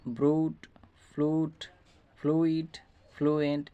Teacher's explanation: যদি ইউর পূর্বে এরকম আর ও এল বসে তাহলে সবসময় মনে রাখবেন যে ইউর উচ্চারণটা দীর্ঘস্বর হবে।